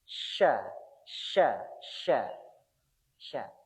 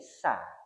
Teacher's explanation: Shin itu ada di tengah-tengah sini. Jadi naik menempel ke atas. Sha, sha, sha, sha. Kalau yang menempel yang di ujung bunyinya jadi sa.